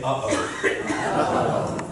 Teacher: Do you feel when you do that, there's a catch in your throat? You're closing your vocal folds, your vocal cords for a second there. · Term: glottal stop